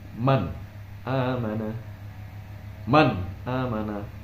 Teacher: dalam hukum membacanya itu tidak boleh ragu-ragu dan tidak dibaca dengung maupun melebur. Jadi hukum bacaannya adalah jelas. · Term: idhar halqi